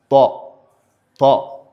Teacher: elle est également une lettre emphatique. Donc elle est une lettre qui est lourde.